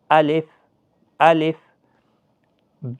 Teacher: الف کو جلدی پڑھیں، الف کو نہیں کھینچنا ہے